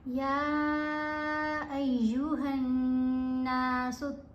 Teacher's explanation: फिर हा को जब नून से मिलाना है तो गुन्ना करना है। गुन्ना करते हुए आवाज़ नाक से पढ़ी जाएगी, मुंह के ज़रिए आवाज़ नहीं आनी चाहिए।